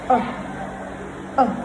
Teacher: To produce the sound, the mouth is in a neutral position. That is, it's neither rounded nor spread out. So you open the mouth like this, and then you produce the sound as if one is weak, like you're not having any strength in you. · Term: schwa sound